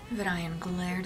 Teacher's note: That's too much vocal fry for Vidayan.